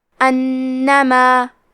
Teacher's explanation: کلمت انما میں الف پہ زبر ہے تو ہم حمزہ کو زبر سے پڑھیں گے. حرف نون پہ تشدید ہے لہذا 2 حرف کے برابر نون کو پڑھنا ہے کیونکہ تشدید کی اصلیت 2 حرف ہے.